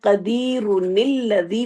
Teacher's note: ٹھیک ہے، یہ قدیرن اور آگے الذی، اگر کوئی ملا کے پڑھنا چاہے قدیرن الذی وہ پڑھے گا، تو یہ تنوین کی وجہ سے یہاں پہ نون زیر آیا ہے